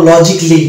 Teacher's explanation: তো যে সকল শব্দের শেষে ICALLY থাকবে, সেই জায়গাটাতেই শুধুমাত্র এ সাইলেন্ট থাকবে। সেখানে আমরা ইক্যালি উচ্চারণ করব না, সেখানে আমরা উচ্চারণ করব ইকলি। যেমন লজিকলি, এটা উচ্চারণ করবো লজিকলি, নট লজিক্যালি।